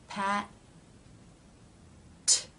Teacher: let's take for example the word pat pat the first part the tongue has moved up into position cutting off the flow of air Pat and the second part the tongue releases and the air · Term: stop consonants